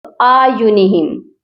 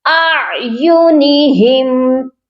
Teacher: یہاں پر حمزہ بھی ہے اور عین بھی ہے، دونوں کی آوازیں کلیئر ہونی چاہیے، الگ الگ آنی چاہیے. یہاں پر بہت سے لوگ مسٹیک یہی کرتے ہیں آیونہم، تو یہ ایسے نہیں پڑھا جائے گا، یا پھر حمزہ کو ہی لمبا کر دیتے ہیں یا پھر آیونہم عین کو پڑھ دیتے ہیں.